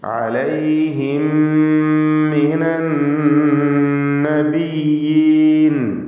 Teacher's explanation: സാക്കിനത്തായ മീം ശേഷമുള്ള മീമിൽ പൂർണ്ണമായും ലയിപ്പിച്ച് മണിക്കണം. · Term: ഇദ്ഗാം ഷഫവി